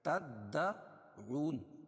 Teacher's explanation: واو ساکن سے پہلے پیش ہو تو وہ مدہ ہوتا ہے، اس کو ایک الف کے برابر کھینچ کے پڑھتے ہیں